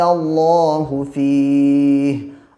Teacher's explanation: اللہ کے لام سے پہلے جب زبر ہو تو اللہ کا لام پر پڑھا جاتا ہے